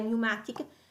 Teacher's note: ma non si pronuncia appunto la P in inglese